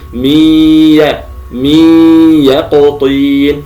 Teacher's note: اقول مثلا م ي يقطين اخرج الياء مع الغنه وهذا خطا الصواب ان الغنه هي في الادغام الذي هو قبل الياء كان نقول م م يقطين فانتبه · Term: ادغام بغنه, الإدغام